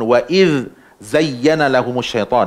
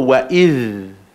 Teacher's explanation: Waiz lidah kat luar. Lepas tu nak tarik balik lidah nak pergi zai pula.